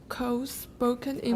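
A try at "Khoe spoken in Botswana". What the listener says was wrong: Oh, pause. The comma tells you to stop, right?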